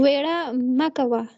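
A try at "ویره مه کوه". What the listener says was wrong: Yara makawa. Yara. Wo is not pronounced. It is silent. Yara makawa.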